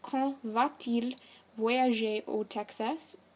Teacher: Note that this sentence does have a T in between va and il as a liaison